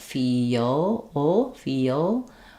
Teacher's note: if I have that dark L, what I'm doing is keeping the back of my tongue down and lifting the front.